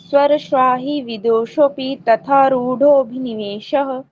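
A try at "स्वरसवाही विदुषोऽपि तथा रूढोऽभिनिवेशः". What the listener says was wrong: अ बोल के जी आप अ नहीं बोलना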